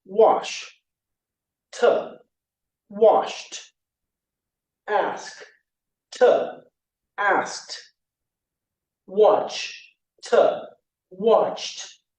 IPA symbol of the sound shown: t